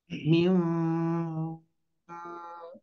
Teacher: e tutup hidung kita m nah diusahakan bunyinya di di bibir bunyinya menggetar di bibir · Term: mim